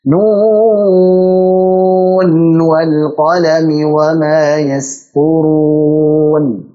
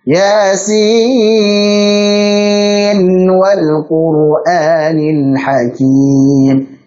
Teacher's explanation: Nun sukun ketemu waw, idgham bi gunnah dong harusnya. Tapi secara riwayah Hafs dan Asim membacanya dengan izhar. Nunnya dijelaskan, bukan diidghamkan.